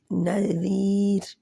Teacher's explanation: نذیر را جو ہے ویسے تو جہاں پہ رکنے کے لیے ہم نے را کو موٹا پڑھنا تھا اگر اس سے پہلے زبر ہوتی یا پیش ہوتی، لیکن را سے پہلے یا جزم والی آ رہی ہے اور اس کا یا جزم والی سے پہلے زیر ہے تو یہ نذیر باریک ہوگا، را باریک رہے گی